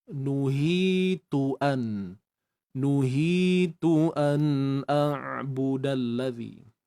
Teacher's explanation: Huruf ta sekali lagi baris hadapan, muncungkan bibir anda.